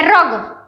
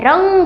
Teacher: रंग होता है तो र और ग के बीच में हमें न सुनाई देता है, रंग, राइट। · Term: अनुस्वार